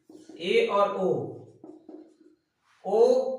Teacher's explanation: ए जब बोलेंगे तो आधा बंद रहेगा, आधा खुला रहेगा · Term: अर्ध समवृत्त